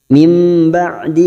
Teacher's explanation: fitulutti nun sukun bertemu ba bacaan iqlab nukar pada huruf ba kita dengungkan dan ditahan selama tiga harakat seperti bertemu mim